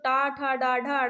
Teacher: टा ठ डाढ ये कहां से बोला जाता है तो आप बोलोगे मूर्धन्य से